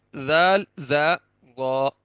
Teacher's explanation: जबान की नोक हल्की सी बाहर निकालेंगे, ऊपर वाले दोनों दांतों के किनारों से नरमी से लगाएंगे, तो जाल की अदायगी भी वहीं से होगी, वा की भी वहीं से होगी। जाल को बारीक करके पढ़ेंगे, वा को पुर करके मोटा करके पढ़ेंगे, मुंह भर के पढ़ेंगे